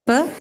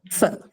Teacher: you feel a friction as the air gets released in the case of f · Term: fricatives